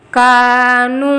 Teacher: دونوں بھی حرف مدہ ہے، برابر ویٹ میں کھینچنا